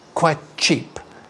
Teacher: you can link the t to the ch